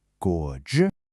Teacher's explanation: We have a third tone, our dip and rise, followed by a first tone which is high and flat. So the first part goes down and up and the second stays high.